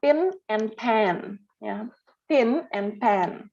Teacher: N itu kan sengau ya, nah, maka vowelsnya menjadi nasalized. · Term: nasalization